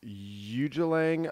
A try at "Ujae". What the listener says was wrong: Or the J is silent, or it's pronounced with a W. It's Ualang. Ualang Atoll.